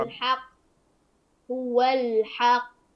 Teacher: القاف هنا قلنا انها قلقله كبرى قلقله كبرى شديده او اشد قلقله كبرى فتقف على هو على هو على هو